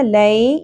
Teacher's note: یا ساکن سے پہلے زبر حرف لین نرمی سے پڑھنا ہے